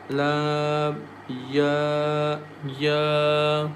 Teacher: ya comes from the middle of the tongue